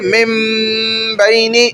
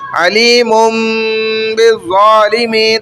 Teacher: نون چھپ رہا ہے اور غنہ میم پر ہو رہا ہے